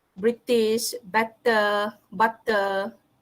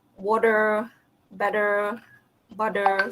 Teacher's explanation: Yang similar D tu, the T sound that is similar to the D sound that is applied by American speakers